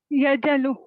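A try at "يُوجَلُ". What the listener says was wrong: यऊजालू. Sister वाव लिखा हुआ है. यऊजालू. यऊजालू. वाजीला, यऊजालू.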